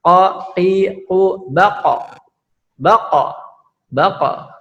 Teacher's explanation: Hurufnya 2, qaf dengan kaf ya. Qaf itu syiddah, kemudian jahar tidak keluar nafas dengan menempelkan pangkal lidah ke langit-langit.